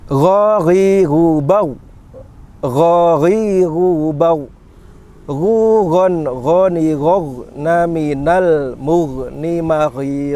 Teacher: gha ini termasuk huruf halqi yang posisinya pada tenggorokan bagian luar, ya, bagian luar yang paling dekat dengan mulut kita. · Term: huruf gha